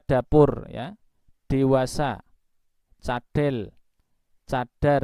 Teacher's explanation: pada saat mengucapkan D pada bahasa Indonesia, kata bahasa Indonesia pada umumnya tadi, ya, tidak semua, maka yang kita tempel ke atas itu sejatinya adalah bagian depan lidah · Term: D dalam bahasa Indonesia